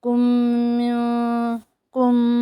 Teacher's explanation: इख़फ़ा है, नाक में आवाज़ आ रही है